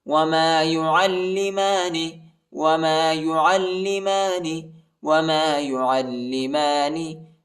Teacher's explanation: عین کو لام کے ساتھ ملائیں گے اور لام کو شدت کے ساتھ سختی کے ساتھ پڑھیں گے۔